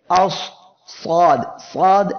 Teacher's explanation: সদ অক্ষরটি উচ্চারণের সময় দেখেন জিহ্বার গোড়া উপরের দিকে যাচ্ছে, তখনই এই অক্ষরটি মোটা হয়ে যাচ্ছে